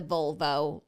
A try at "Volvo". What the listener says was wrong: And you're saying it like vulva? It's V-O, so Volvo.